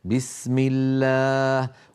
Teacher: وحاذرا تفخيم لفظ الألف، أي احذر تفخيم لفظ الألف إن سبقت بحرف مرقق، نحو بسم الله. لاحظتم كيف الألف في بسم الله مرققة